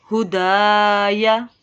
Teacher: تابع، ہدایا، الف سے پہلے حرف کے اوپر زبر ہے دال کے اوپر تو یہاں پہ الف مدہ کا قاعدہ، دال کو ایک الف کے برابر لمبا کریں گے